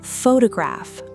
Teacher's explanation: photograph, stressed on the first syllable, pho-to-graph.